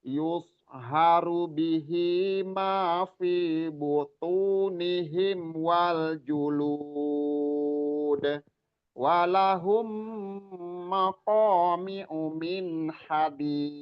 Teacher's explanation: bagusnya di ujungnya itu nadanya diturunin dan dipanjangin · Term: mad arid lukun